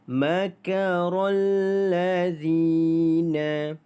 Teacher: Zina dibaca dengan 2 harakat kerana mad asli hurufnya, maka zi itu dipanjangkan menjadi 2 harakat